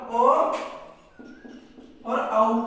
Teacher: कंठ और ओठ से हम ओ और औ का उच्चारण स्थान करते हैं। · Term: कंठोष्टम